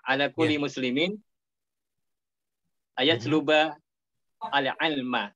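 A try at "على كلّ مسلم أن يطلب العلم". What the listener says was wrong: Tapi saya kurang ini nih, nggak tahu di mana problemnya. Untuk kulinya ini Pak, untuk kulinya saya tidak melihat tasdid. Atau kalau itu tasdid, saya tidak melihat kasrohnya.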